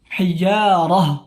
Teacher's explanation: Maka tak marbutah bagaimanapun keadaannya fathah, kasrah, dhammah, fathatain, dhammatain, kasratain, tetap ketika dia waqaf atau berhenti, taknya dirubah menjadi bunyi ha. Hijarah, bukan hijaratu atau hijarat.